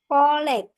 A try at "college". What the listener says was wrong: You have the sh, like that. College.